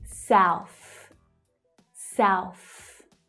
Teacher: So in the first word, we have the ow as in now vowel sound and the unvoiced th. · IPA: /aʊ/